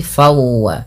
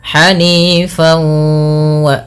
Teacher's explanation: Langkah pertama dengan mengidghamkannya dengan memasukkan tanwinnya kepada huruf waw. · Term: idgham bi gunnah